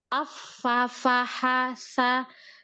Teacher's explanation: Antuna akan mendengar suaranya lebih lemah daripada huruf yang jahar.